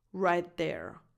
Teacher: Right there. So I'm connecting the T of the word right with the voiced TH of the word there.